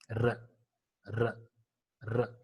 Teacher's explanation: Whenever we pronounce, there is a considerable friction at the tip of the tongue. R, R, R. It vibrates very considerably.